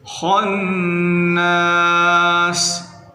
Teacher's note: خا کو موٹا کرنا ہے، نون مشدد غنہ کریں